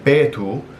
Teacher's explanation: there's not an h sound but it's more just like a long o sound